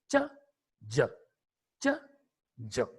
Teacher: Because again, a kind of friction takes place at the time of the production of the sounds. They begin as plosives and end as fricatives. So they are called affricate sounds.